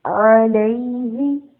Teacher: عین کی آواز کو واضح کریں گے تاکہ وہ حمزہ کی آواز نہ لگے